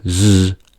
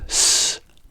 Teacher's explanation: when we say z, there is a vibration, but when we say s, there is no vibration